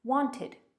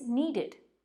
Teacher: we'll add an extra syllable that sounds like an id at the end